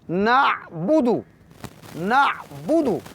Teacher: جب ہم عین کو دیکھتے ہیں تو عین چونکہ ساکن ہے اس کو ہم ایک تو مخرج کا خیال رکھیں گے کہ عین مڈل آف تھروٹ یعنی وسط حلق سے ادا کریں گے